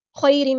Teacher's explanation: خیرم میں یا ہمارا یا لین ہے، نرمی سے موڑیں گے